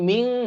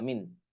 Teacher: নুন সাকিনের পরে তা আসলে তখন ইকফা গুন্না হয়, এজন্য এখানে মিং হবে, মিন হবে না